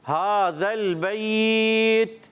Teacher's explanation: अब खड़ी हरकत एक अलिफ खींच कर पढ़ेंगे, उसके बाद यालीन को फिर नरमी के साथ और आखिर में जब वफ़ करेंगे तो थोड़ा सा लंबा